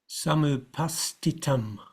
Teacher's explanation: this upastitam, it's still got to be pronounced as an aspirated t.